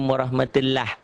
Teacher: mengucapkan huruf lam dengan tebal sampai memenuhi mulut ketika mengucapkannya